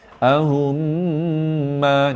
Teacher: Pasal dengung 2 harakat, lepas tu masuk hidung.